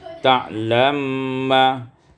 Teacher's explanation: Pada ayat yang 116, ta'lamu ma, idghamul mim fil mim, diidghamkan mim pada mim maka menjadi ta'lamma